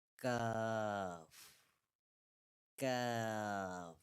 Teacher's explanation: This is a normal letter or light letter, not a bold or heavy letter. When pronouncing the letter Kaaf, the back part of the tongue touches the hard palate, which is the hard part of the roof of the mouth.